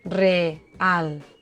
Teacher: Dues vocals fortes, síl·labes diferents. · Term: iats